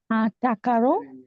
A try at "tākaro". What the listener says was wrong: Very close. We have that longer A sound. Long A. So we hold up your chin and stroke your neck to be a light and lovely swan on the A. Tākaro. Yes, tākaro.